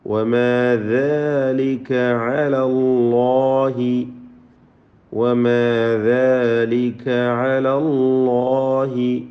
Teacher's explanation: അല്ലാഹ് എന്ന ഇസ്മുൽ ജലാല ലാമിനെയും അലിഫിനെയും തടിപ്പിച്ച് തഫ്ഖീം ചെയ്യുക